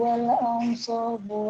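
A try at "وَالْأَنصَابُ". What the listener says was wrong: wal ansabu kurang gunanya kurang tebal.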